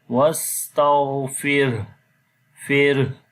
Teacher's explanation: There is ra is coming with sukun sign and there is kasra before the ra. So ra we read basically in light sound